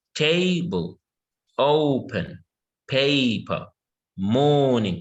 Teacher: Yeah, they're all 2 syllables. And in all of these, our stress is on the first syllable.